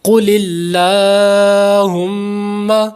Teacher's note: یہاں پر لام باریک ہو رہا ہے کیونکہ اللہ سے پہلے زیر ہے۔ قل اللہم، میم شدت پہ غنہ کریں گے۔